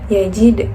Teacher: Nah yajid itu yajid hukumnya qalqalah sugro karena berada di tengah kalimat dan bacanya juga dipantulkan secara tipis